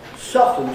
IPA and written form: ˋsɒftn̩ (soften)